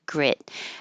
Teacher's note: the vowel for this is I as in hit so it's a little lower than e or it'll sound like greet